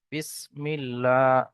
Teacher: আল্লাহ শব্দের পূর্বে এখানে জের এসছে, তাই আল্লাহ শব্দটাকে বারিক পড়তে হবে, অর্থাৎ লামকে লা পড়তে হবে।